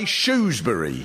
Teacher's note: I don't pronounce the r at all and say shury